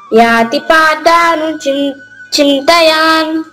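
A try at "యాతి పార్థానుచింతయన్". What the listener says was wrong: మళ్ళా యా కి దీర్ఘం పెట్టినావా దీర్ఘం ఎక్కడ ఉందా మళ్ళా చెప్పు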